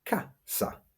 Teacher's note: We stress that word on the first a, casa, not casa.